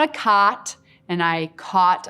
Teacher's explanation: these two vowels are not merged in my dialect